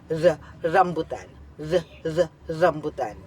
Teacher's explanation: Ang hangin ay ilang ulit na hinaharang hinaharang at pinabayaang lumabas sa pamamagitan ng ilang beses ng pagpalag ng dulong nakaarkong dila. At ang punemang katinig na nakapaloob diyan ay R. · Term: pakatal